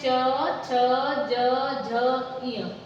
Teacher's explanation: ये तालु से बोले जाते हैं।